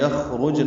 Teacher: یخرجن میں خوا ساکن ہے، اس پہ ہم سے را پر ہے، جیم ساکن پہ قلقلہ ہے